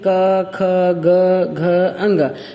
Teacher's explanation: इन 5 अक्षर की आवाज हमारे गले से आ रही है, हमें महसूस हो रहा है ना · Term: कंठ